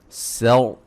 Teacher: سین کو باریک اور را کو موٹا